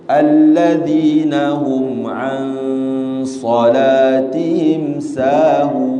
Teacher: dia agak tebal dengung dia kerana berjumpa dengan huruf yang tebal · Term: ikhfa